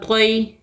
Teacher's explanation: یا ساکن سے پہلے زبر ہو یا لین ہوتا ہے، نرمی اور جلدی کے ساتھ پڑھتے ہیں